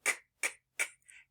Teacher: So the way we make the k sound is it happens in the back of our mouth. You have your tongue at the back of your mouth, and it's a stop sound, meaning we can't stretch it. So our voice is off for this sound.